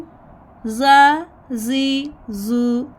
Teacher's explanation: आपकी ज़ुबान की नोक ऊपर दो दांतों के दरमियान रखनी है, रख के थोड़ा सा बाहर निकालेंगे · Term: जाल